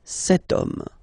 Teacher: as in French, H is not pronounced, so the first sound that we hear is O, okay, and then it will follow the same rule.